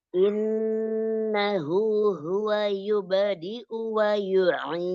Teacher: kasrahnya tidak sampai masuk ke rongga hidung